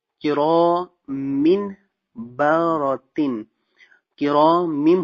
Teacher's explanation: دو زیر کو میم کے ساتھ ملا دیا تو کرامم ہو گیا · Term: اقلاب